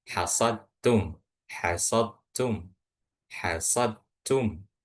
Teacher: Jadi langsung masuk ke huruf ta-nya. Ini dal sukun bertemu dengan ta yang berharokat dhammah.